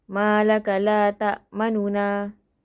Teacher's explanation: Ishmam ialah memuncungkan kedua bibir sejurus selepas mematikan huruf sebagai isyarat baris depan tanpa bunyi. Rom pula ialah dibaca dengan 1/3 dhammah.